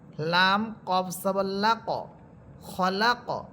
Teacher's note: লাম কফ সবর লা ক, এখানে দেখেন লাম কফকে ধরবে, এমনটা হবে না যে আপনি লাম কফকে ধরে থেমে যাবেন না, প্রতিধ্বনি হবে, আওয়াজটা রিপিট হবে।